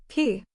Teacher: pushing air out through your mouth now say the sound P you can say the P sound with a little burst of air